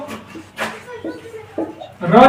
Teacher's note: र बोलने पे कंपन होता है ज्यादा ना तो इसको प्रकंपित या लुंठित व्यंजन कहते हैं